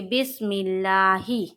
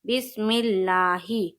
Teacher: لفظ اللہ کا لام کیا ہوگا؟ باریک ہوگا۔ کیوں؟ کیونکہ لفظ اللہ کے لام سے پہلے زیر ہے